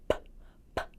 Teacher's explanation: Do you feel that puff of air coming out? That's a stop sound. It's kind of punched right out.